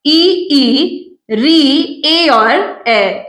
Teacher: जो पांच स्वर रहेंगे वो उच्चारित किए जाएंगे जीभ के अग्र भाग से इ ई ऋ ए और ए जीभ के अग्र भाग से